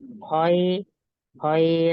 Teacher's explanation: izhar artinya dibaca jelas. Halki karena hurufnya dia berada di tenggorokan kho.